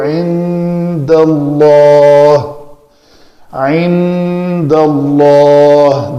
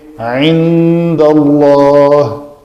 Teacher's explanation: اس میں جلالہ کا لام جو ہے وہ پر کیا جا رہا ہے